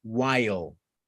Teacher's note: Tengan en cuenta eso, que hay una pequeña vocal antes de la L.